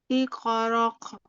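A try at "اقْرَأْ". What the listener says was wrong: iqra. Bukan tapi hanya tertahan saja iqra. Bukan huruf kaf ya di belakang ya Umi, tapi huruf hamzah. Huruf hamzah itu hanya ditahan saja. Iqra. Masih terdengar nggak ada koknya ya. Iqra langsung seperti ngerem.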